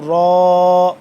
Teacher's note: را کو پر کر کے پڑھیں گے کیونکہ اس کے اوپر زبر ہے